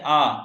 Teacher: विवृत स्वर का अर्थ है अधिक खुला हुआ मुख